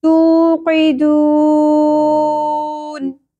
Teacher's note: second last letter ہمارے پاس آ گیا حرف مدہ، تو اس لیے یہاں پہ 3 الف کے برابر کھینچیں گے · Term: مد عارض وقفی